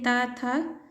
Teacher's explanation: ये दोनों वर्ण भी दंत है